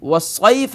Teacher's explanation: اور آخری کلمہ والصیف ہے, والصیف میں پہلا حرف واو ہے, واو حروف شفویہ میں سے ہے اور یہ دونوں ہونٹوں کے گول کرنے سے ادا ہوتا ہے